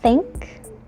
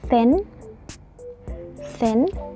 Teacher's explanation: So the sound is a voiceless uh dental fricative. This sound it's placed by putting your tongue into the back of the teeth back here.